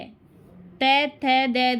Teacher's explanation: त थ द ये क्या, दंत है